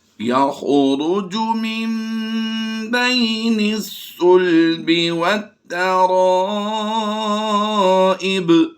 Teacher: اقلاب کہتے ہیں ایک حرف کو دوسرے حرف سے بدل دینے کا نام، یہ اقلاب ہوتا ہے۔ تو یہاں پر ہم نون کو با آنے کی وجہ سے میم سے کنورٹ کریں گے